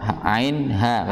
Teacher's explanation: Ini sering dengarnya bacanya ihnil dengan bacaan hamzah bukan ain.